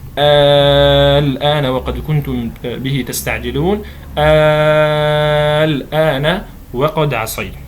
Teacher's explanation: نلاحظ حرف المد الألف وبعده لام ساكنة، وهذه اللام الساكنة غير مشددة، ومعنى غير مشددة أي أنها غير مدغمة، يعني ما عندي لامين واحدة ساكنة والثانية متحركة فجعلناها شدة، لا، هي لام ساكنة فقط الآن. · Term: المد اللازم المخفف الكلمي